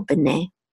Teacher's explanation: And this is the accent mark, so you know that the accent is on the last syllable